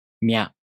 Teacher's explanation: you first make the tongue position of the [mʲ] consonant. Then, the tongue moves into position for the [a] vowel.